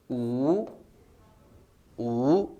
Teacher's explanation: जीवा पीछे की तरफ खींच रही यानी पश्च स्वर।